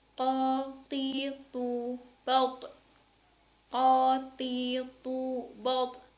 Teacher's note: Huruf to yang dikeluarkan dengan lisan menyentuh tempat dua tumbuhnya gigi seri bagian atas. To dibaca ketika dalam posisi mati akan dibaca mantul.